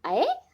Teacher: अ और ए मिलकर बना अय, अ और ओ मिलकर बना औ। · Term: संयुक्त स्वर